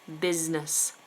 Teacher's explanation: you must remember that first S is sounded like a Z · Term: a Z sound